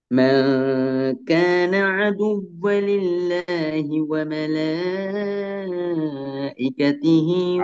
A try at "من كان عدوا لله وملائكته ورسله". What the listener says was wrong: அதுவலில்லாஹி இல்ல. அதுவல்லில்லாஹி. மூணு சத்து இருக்குது சாமி. ஒன்று அதுவ, திருப்பி அதுவல், திருப்பி அதுவல்லில்ல. மூணு சதையும் எடுக்கணும்.